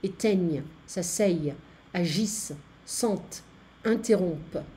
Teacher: Be careful, the E-N-T is not pronounced.